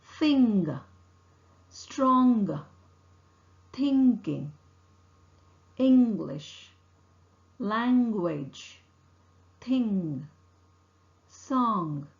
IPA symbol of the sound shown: ŋ